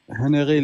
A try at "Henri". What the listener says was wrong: Alors, c'est pas Henry. Henry, c'est بالعربية, c'est en arabe. C'est Henri. Voilà, le H, on le prononce pas en français. C'est Henri IV.